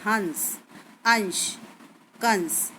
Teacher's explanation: अनुसार का उच्चारण सिर्फ नाक से किया जाता है इसमें वायु हमारे ना कुच करते हुए निकलती है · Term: अनुस्वार